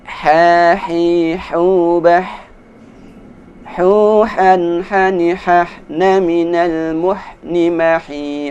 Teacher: Suara ha dikeluarkan di tenggorokan seperti ketika kita mengambil nafas ha.